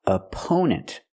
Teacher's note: The stress on the second syllable we use a long o sound like no and go for the second syllable oppo opponents and the last syllable is relaxed n opponents.